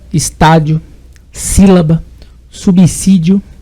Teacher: é uma palavra cuja antepenúltima sílaba é tônica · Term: proparoxítona